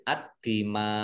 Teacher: Ad-dima, mim fathah alif mat tobi'i, tetapi karena bertemu dengan huruf hamzah dalam satu kata maka menjadi mat wajib muttasil. Mad wajib mutasil dibaca panjang 5 harokat. Dan ini hamzah fathah ini karena waqaf dibaca sukun sehingga menjadi ad-dima.